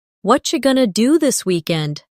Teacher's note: Did you hear how what are you going to became what you going to? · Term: connected speech